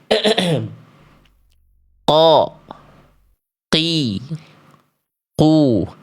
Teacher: Makhraj huruf qof keluar dari pangkal lidah.